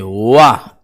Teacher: जब इसको आप बोलेंगे वाह तो दांत और ओंठ दोनों का प्रयोग हो रहा है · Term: दंतोष्ठ व्यंजन